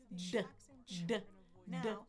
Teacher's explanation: Now what's the difference between a T and a D? nothing except the voicing. So still put your tongue on the on the bump right here >> and voice it D as you explode D.